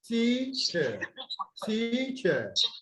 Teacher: Okay, so it is longer. The first syllable is longer. And then you have the second syllable drops. The pitch would drop.